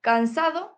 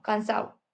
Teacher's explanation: La pérdida de la D intervocálica, en vez de decir cansado, aquí decimos cansado.